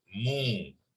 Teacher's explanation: Kalau mim baris depan diikuti dengan waw, mu, 2 harakat. So yang dibunyikan tu bukan waw.